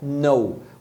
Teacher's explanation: O verbo saber, ele se escreve com K, só que você não pronuncia esse K, você pronuncia know.